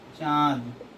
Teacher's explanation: जब नाक से हवा कम तथा मुख से ज्यादा उत्पन्न हो उसे अनुनासिक ध्वनि कहेंगे